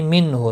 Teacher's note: نون ساکن کے بعد ہا ہے، اظہار ہلکی ہوگا، غنہ نہیں ہوگا